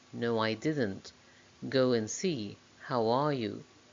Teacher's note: It's like you're inserting a little w between the words. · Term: little w link